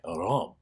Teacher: But probably the most prominent part in this is the use of the word Rome, with that that great breathy O sound in it, Rome